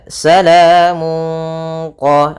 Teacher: Kemudian domatain bertemu dengan qof yaitu kita namakan dengan bacaan ikhfa yaitu suaranya tanwinnya disamarkan ke huruf qof.